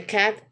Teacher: a like in the cat it have a low front vowel